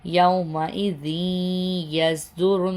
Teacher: یہاں پہ را کو نون کے ساتھ ملا دیا، غنہ ہو گیا